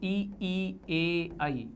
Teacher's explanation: जैसे अग्र स्वर, जीभ का आगे का भाग, इन स्वर ध्वनि के उच्चारण में जिह्वा का अग्रभाग सक्रिय रहता है